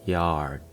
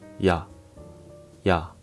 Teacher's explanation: in English, vowels tend to stretch out, like yard goes yard. But in Korean, it's short and clean, just ya, ya. So don't drag it out.